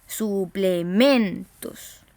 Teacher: La voz se carga, la sílaba tónica está en la penúltima sílaba